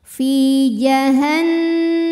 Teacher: Karena ada ya sukun didahului kasrah, maka huruf fa panjang 2 harokat. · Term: mad tabi'i dhahiri